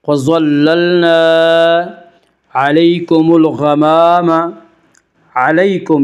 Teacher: وَظَلَّلْنَا عَلَيْكُمُ الْغَمَامَ، علیکم، یا لین، یا لین وہ یا جو ساکن ہو، اس سے پہلے زبر ہو۔ یا لین کو نرم آواز کے ساتھ جلدی پڑھیں گے